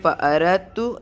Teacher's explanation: تا اور دال ایک مخرج اور ویسے بھی دال ساکن کے بعد مشدد آ گیا تو ہم ساکن کو نہیں پڑھیں گے مشدد کو پڑھتے ہیں